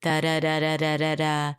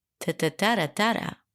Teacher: going up in pitch and down in pitch, and this wavy feel of the voice